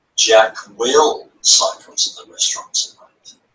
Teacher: I have shifted or moved the emphasis onto will.